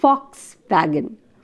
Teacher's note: Though it is V, it is pronounced with a f